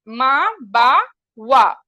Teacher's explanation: मा बा वा यह क्या है दोनों होठों से निकलेगा